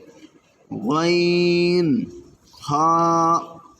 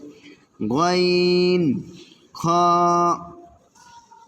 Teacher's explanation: তিন নাম্বার মাখরাজ হলকের শেষ হইতে গাইন খ